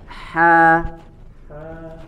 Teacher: Ha, di mana makhrajnya? Ada di wasatul halqi, ada di tengah tenggorokan.